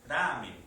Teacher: algunos lingüistas la van a categorizar como aproximante una mezcla entre la L y la r